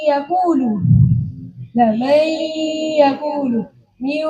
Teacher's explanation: Ini artinya yang masuk ke dalam huruf yang kedua ini tidak secara total. Hanya makhrajnya nun saja yang masuk pada ya dan wau tapi sifatnya masih tetap yaitu sifat gunahnya. Buktinya kan yaakulu yaakulu min itu namanya idam naqis. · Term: idgham nakis